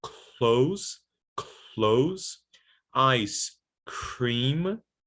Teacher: They get voiceless, right? So you still have aspiration, and the l or the r become voiceless. That's why there is this little circle under the l and the r here.